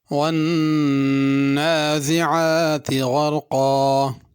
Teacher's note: ون کے نون پہ غنہ کرنا ہے، نازعات میں زا ہے، اس کو زال نہیں پڑھنا، اور نازعات عین سے پڑھنا، نازعات حمزہ سے نہیں پڑھنا۔